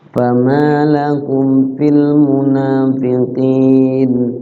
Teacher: Fama memiliki panjang durasi 2 harokat karena statusnya secara hukum tajwid menjadi mad tobi atau mad asli.